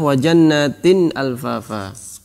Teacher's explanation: jelas nunnya tanpa ada gunnah yang dipanjangkan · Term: izhar